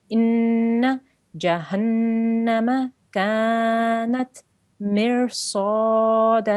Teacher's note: Calf with an alif madda next to it because the calf has a fatha on top. So we need to elongate that for 2 seconds.